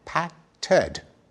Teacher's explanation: And when we say patted, we stick in a vowel, patted,